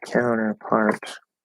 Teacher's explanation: i'm going to stress on count anyway · Yeah, primary stress on count